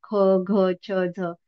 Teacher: तर महाप्राण वर्णामध्ये त्या वर्णाचा ह सारखा उच्चार होतो.